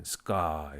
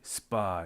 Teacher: 일반인들도 S 다음에 오는 발음은 뿌뜨끄로 해라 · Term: unaspirated